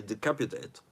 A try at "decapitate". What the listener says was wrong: Decapitate, not decaputate.